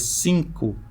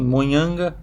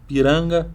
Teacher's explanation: ao falar 5, a língua ela vai para trás, lá para o véu palatino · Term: consoante nasal velar